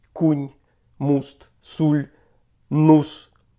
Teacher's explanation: маємо давній у в новозакритих складах де в інших говорах звучить І